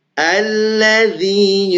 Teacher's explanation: bukan allazzi atau allazzi tapi dzal digigit